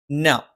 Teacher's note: ന നാവിൻ്റെ അറ്റം മേലെ മുൻപല്ലിൻ്റെ മോണയിലാണ്.